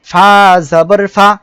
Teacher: নিচের ঠোঁটের পেট সামনের উপরে দুই দাঁতের আগার সঙ্গে লাগিয়ে ফা অক্ষরটি উচ্চারিত হয়